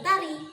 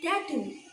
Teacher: dengan ujung lidah sebagai artikulator aktif dan gigi atas sebagai artikulator pasif. Contohnya ada huruf T. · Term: hambat letup apikodental